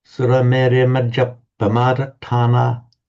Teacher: Interestingly, and I put a note here, I don't know how many of you read it, but when we're chanting this, I notice, and certainly in Manchester, and I think all the other Samatha chanters I've heard, when they're chanting this, they chant it with a double P.